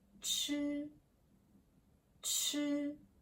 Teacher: This is like English chi in chair, but with more air. Chi, chi. And it sounds like chi in chat.